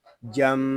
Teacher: یہاں میم شدد ہے، اس کو غننے کے ساتھ ادا کریں گے